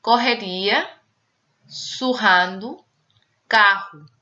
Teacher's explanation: Som uvular, isto é, atrás, na garganta, quando a pronúncia for forte. Isto é, quando a pronúncia for forte, vamos pronunciar na variante portuguesa esse R forte como um R francês, uvular, atrás na garganta.